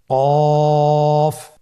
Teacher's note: কফ উচ্চারণের ক্ষেত্রে অবশ্যই 3 আলিফ টেনে পড়তে হবে।